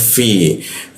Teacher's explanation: Lalu masuk ke fi bibir bawah digigit dia